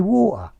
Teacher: the glottal t is water without the tea